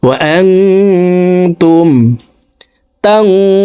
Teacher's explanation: নুন সেকেন্ডকে নাকের ভিতরে লুকাইয়া গুন্নার সহিত পড়তে হবে। ওয়া আনতুম তানজুরুন, তাং এখানে ইকফা গুন্না, নুন সেকেন্ডের পর ইকফার 15টি হরফের ভিতরে একটি হরফ জ আসছে, এই কারণে নুন সেকেন্ডকেও নাকের ভিতরে লুকাইয়া গুন্নার সহিত পড়ব।